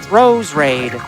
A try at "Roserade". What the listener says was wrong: Rose Raid? Isn't it Roserade? Like, there's a whole syllable there. You're dropping.